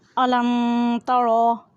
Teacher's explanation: رو کو پر یعنی موٹا ادا کریں۔